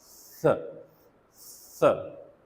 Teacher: we curve the front part of our टंग, ठीक है, it comes close to our एल्वीलर रीच, और यहाँ से एयर जो है वो फ्रिक्शन खाते हुए बाहर निकल रही है